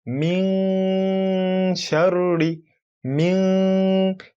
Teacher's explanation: When we nasalize, meaning when you're reciting it, when someone says min sharri, min, if you were to hold your nose and you try to make that sound min, you notice a strong pressure coming from inside of the nostril trying to escape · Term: nasalization